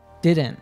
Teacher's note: When we have an NT contraction of negative auxiliary verbs like don't, won't, haven't, isn't, doesn't, the T doesn't drop. Rather, it's transformed into a glottal T